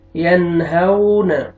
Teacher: نون ساکن کے بعد حروف حلقی میں سے ہا آ رہا ہے، آپ نے یہاں پہ اظہار کرنا ہے